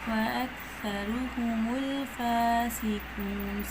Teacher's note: را کے اوپر پیش ہے، را موٹا پڑھا جائے گا · ہے نا، زبان کی نوک اور ثناء علیہ کا اندرونی کنارہ، جب زبان کی نوک ثناء علیہ کے اندرونی کنارے سے لگتی ہے تو ہمارا سا نرمی سے ادا ہوتا ہے